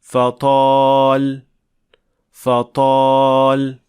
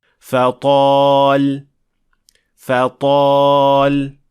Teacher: इस तरह फतल फतल जबकि इसे इस तरह सुनाई देना चाहिए फतल फतल तो ता को पुर और भारी आवाज पैदा करने के लिए जुबान के पिछले हिस्से को काफी ऊपर उठना होगा · تو تا کو پر اور بھاری آواز پیدا کرنے کے لیے زبان کے پچھلے حصے کو کافی اوپر اٹھنا ہوگا۔